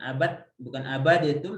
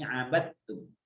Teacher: Bukan abadatum tapi abattum gitu ya. Jadi ini dalnya masukkan ke ta jadi sa'atta · dal dan ta itu makhrajnya sama ya. Karena makhrajnya sama, dia hanya sifatnya berbeda dalam makharijul huruf. Maka dia diidghamkan